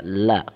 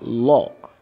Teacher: Dimaksudkan dengan la yang dibaca tipis adalah la-nya itu dibaca la. Kalau lam yang dibaca tebal adalah lo.